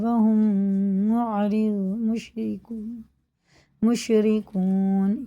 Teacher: یہ میم ساکن کے بعد میم ہے تو غنہ کر کے پڑھیں گے